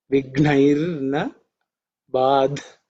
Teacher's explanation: In this, this vigna is actually the fourth letter in the ka varga. So it has to be aspirated. Gh, okay, G, with extra air.